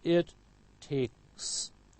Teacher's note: K is voiceless, so followed by voiceless s